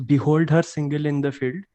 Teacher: behold means be was unstressed and hold was stressed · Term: iambic pattern